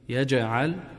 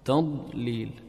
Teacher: القلقلة في الجيم، يجعل والضاد ما فيها قلقلة، تضليل